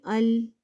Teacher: زبان کا کنارہ جب ثنایا، ربائی، انیاب اور ضواحک کے مسوڑوں سے لگے تو لام ادا ہوتا ہے